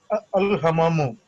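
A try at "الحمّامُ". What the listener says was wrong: Al Hammamu. See here before, uh, after kha, there is a meme and there is shadda on it. So you have to pronounce as Al Hammamu.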